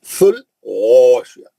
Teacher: غین اوپری حلق سے مستعلیہ کا موٹا